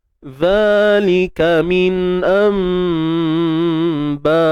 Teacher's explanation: Kita tukarkan bunyi nun kepada mim. Baik, cuma kaedahnya ialah kita tutup bibir bersahaja. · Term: Iqlab